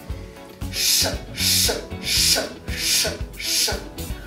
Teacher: Он должен быть поднят к верхнему небу, челюсти выровнены, губы округлены. Звук произносится легко и коротко, боковые края языка касаются зубов и не пропускают воздух.